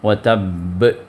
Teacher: اب یہاں پر شدہ آ گیا ہے با کے اوپر، تو اس وجہ سے دبا کر وہاں پر چھوڑیں گے